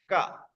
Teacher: to produce a ka sound, vocal folds are not required. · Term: unvoiced